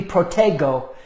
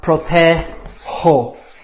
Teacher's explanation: we need to give it a softer, more of an H sound